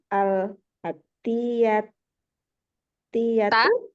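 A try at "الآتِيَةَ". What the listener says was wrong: Ta sama fathah semuanya. Adifil asma'al atiyata.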